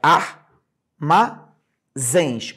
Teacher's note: última sílaba que eu escrevi zens ela é a sílaba tônica